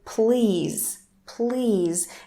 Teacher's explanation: aspiration is not that obvious there so it resembles the russian sound